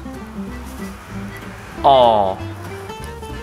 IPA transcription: ã